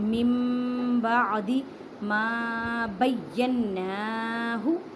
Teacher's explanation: نون مشدد گنہ کریں اور ایک الف کی مقدار میں کھینچ کر پڑھیں